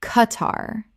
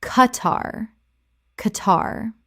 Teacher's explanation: Two syllables with the Q making a hard K sound, not a KW sound.